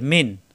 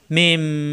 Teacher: না থাকলেও এখানে মনে মনে মিম ধরে তারপরে গুণ্য করে পড়তে হবে, কারণ এখানে নুন ছাকিনে অথবা তানবিনের পরে এখানে বা আসছে, তো নুন ছাকিনের পরে বা আসা, এটা মিন না পড়ে মিম এভাবে পড়তে হবে